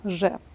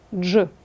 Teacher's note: глухий Т по-перше стає дзвінким а по-друге передшиплячим також стає шиплячим а саме африкатою